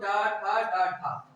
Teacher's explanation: इन चारों का उच्चारण तो केवल और केवल मूर्धा से होगा